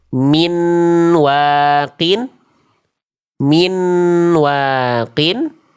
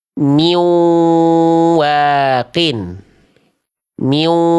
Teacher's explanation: kesalahan pertama itu jadi nun sukunnya masih dibaca jelas